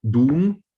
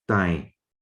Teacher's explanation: So you have the example of the last one here, doom, a post or a pillar, which becomes dai in Burmese. So D changes to non-aspirated plain T.